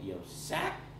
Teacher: I emphasized it a lot there, but it's a lot higher rising tone than Mandarin Chinese.